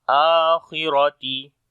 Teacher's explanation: A we long due to standing fatha on it. Kha and ra we read in heavy sound.